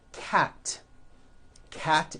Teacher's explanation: cat cat ends with an unvoiced T